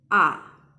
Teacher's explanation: half third tone is only the going down sound